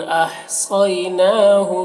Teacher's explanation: अह ये हा की आवाज़ और सौत को मोटा करके पढ़ना।